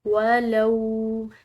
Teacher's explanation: لام کے بعد واو ساکن ہے جس کی وجہ سے اس کو ہم نے ایک الف کے برابر کھنچاؤ دے کر پڑھا